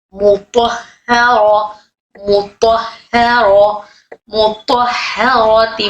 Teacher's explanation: طا موٹا، ہا باریک، میم باریک، اور ہا پہ تشدید مشدد والی ہا